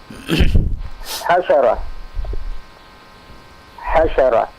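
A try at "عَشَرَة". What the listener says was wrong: Asyarah. La, bukan ha, tapi a. Ain. Asyarah. Ya, ainnya pendek.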